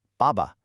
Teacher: The first ba has that strong falling fourth tone, but the second one, it's just a light, little unstressed puff of sound. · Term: neutral tone